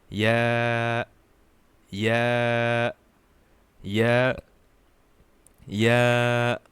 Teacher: ya is produced with the middle part of our tongue